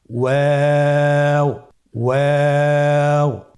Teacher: ওয়াও হরফটি উচ্চারণের ক্ষেত্রে বারিক হবে এবং 3 আলিফ টেনে পড়তে হবে।